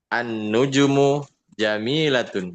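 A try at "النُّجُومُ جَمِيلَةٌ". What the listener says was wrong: nujunya panjang. Panjang nujunya. An-nujumu.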